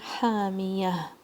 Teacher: ہا حلق کے درمیان سے آواز آئے گی ووکل کارڈز کو آپ نے سکویز کرنا ہے تھوڑا. ہا 2 کاؤنٹس.